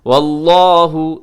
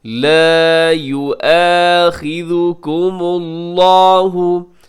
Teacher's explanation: لفظ اللہ موٹا پڑھیے گا